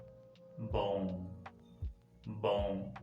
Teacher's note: It's more nasal, and the mouth stays open when we say the word bom, bom, bom. Almost like we say the word bone, but it's a little different.